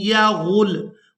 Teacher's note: हमजा को या मुशद्दद के साथ मिलाएंगे और गुन्ना के साथ अदा करेंगे। हमजा या ज़बर ऐ, या ज़बर या, या गैन लाम पेश गुल, यगुल।